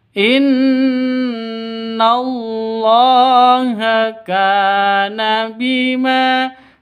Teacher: kana panjang dua ketukan. Karena ada alif diawali dengan fathah.